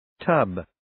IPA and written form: təb (Tub)